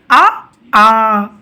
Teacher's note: అ ఆ అనే పదాలు మనకి కంఠం నుండి వస్తాయి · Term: కంఠ్యాలు